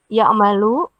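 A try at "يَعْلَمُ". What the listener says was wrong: Bukan malu, ini alima ya. Berarti ya'lamu. Ya, ya'lamu.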